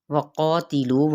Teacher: واو ہونٹوں کی ناتمام گلائی سے قا مد سلیبل الف کا قاعدہ ہو رہا ہے یہاں پہ۔